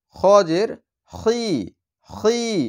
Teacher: খ হচ্ছে গলার শেষ ভাগ থেকে উচ্চারণ হয় খ। তাহলে খ হচ্ছে মোটা হরফ, এর জন্য এর হরকতে আকারের উচ্চারণটা হবে না।